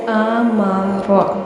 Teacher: الف حمزہ باریک پڑھا جاتا ہے